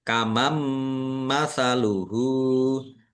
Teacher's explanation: nun sukun bertemu dengan huruf mim bacaan idgham bi gunnah masuk dengan mendengung yaitu mendengung mim